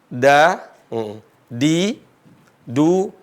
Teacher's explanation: ujung lisan ketemu dengan Gigi gusinya bukan Giginya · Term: huruf Dal